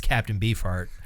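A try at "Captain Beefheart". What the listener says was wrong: the way you say it for some reason doesn't sound like you're saying beef heart. It sounds like you're beefart.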